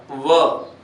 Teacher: व का उच्चारण करेंगे तो अपने दांत और होठ ये दोनों साथ में चिपकेंगे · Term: दंतोष्ठ